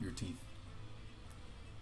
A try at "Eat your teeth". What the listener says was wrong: when you said that, the eat in the eat your teeth part didn't really come out,